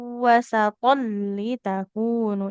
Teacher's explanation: Jadi ini idgham bila gunnah ya. Tanwin bertemu lam.